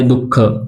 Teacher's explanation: अगोदर स्वर येतो आणि नंतर विसर्ग येत असतो बरोबर त्याच प्रकारे विसर्गाचा उच्चार करत असताना थोडे ह जो आहे जो की महाप्राण आहे ह ला आपण थोडा झटका दिल्याप्रमाणे काय होत उच्चार होतो